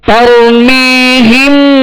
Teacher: ترمیہم بحجارۃ من سجیل، ترمیہم، یا را ساکن سے پہلے زبر ہے تا پر، را ساکن سے پہلے زبر ہے، لہذا را کو پر پڑھیں گے. مگر اس بات کا خیال رکھیں کہ را کو پر کرتے ہوئے تا پر نہ ہو، تارو می نہ ہو.